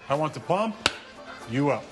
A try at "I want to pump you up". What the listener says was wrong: No. You want to pump you up like that. You put the emphasis on the wrong syllable.